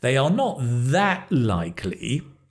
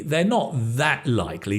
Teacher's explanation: The stress on that, they are not that likely. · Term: word stress